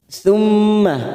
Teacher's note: mim yang bertasdid gunnah musaddadah kita tekan 3 ketuk